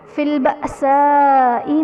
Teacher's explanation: فی البأساء میں حمزہ ساکنہ ہے تو اسے جھٹکا دے کر پڑھیں گے